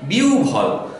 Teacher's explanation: এই বয়ের সাথে যখন হ যুক্ত হলো তখন ব মহাপ্রাণ হয়ে যাচ্ছে। বয়ের সাথে হ যোগ করলে ব যখন মহাপ্রাণ হবে তখন উচ্চারণ হবে ভ